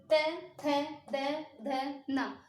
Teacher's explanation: आप बोलोगे त थ द ध न। जब आप बोलोगे तो हमारी जीभ जो है हमारे दांतों को टच करेगी, तो इसलिए होगा हमारा दंत है।